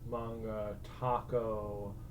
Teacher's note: when it's clearly foreign, the letter A is pronounced as more of an ah.